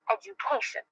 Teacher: i'm going to emphasize the third syllable